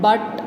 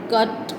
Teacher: the central part of the tongue is raised and the lips are of course unrounded. So the three term label is central unrounded vowel between open and half open.